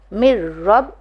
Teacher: دم، میم رو زیر مر، رو با زبر رب، مر رب، یہاں پہ بھی ادغام کا قانون آئے گا کیونکہ نون ساکن کے بعد رو آیا ہے مگر گنہ نہیں ہوگا